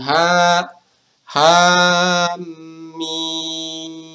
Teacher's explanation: Ha dibaca 2 harokat, mimnya kita baca 6 harokat.